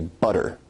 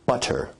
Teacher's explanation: your tongue is producing a tap sound there rather than a full stop or plosive sound